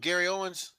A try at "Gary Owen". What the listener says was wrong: Owen. It's not an S in that man name. He be killing y'all about that too, man. It's just Gary Owen, bro.